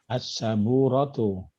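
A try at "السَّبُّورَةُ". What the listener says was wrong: Jadi pakai tasdid Pak ya, diingat. As-saburatu.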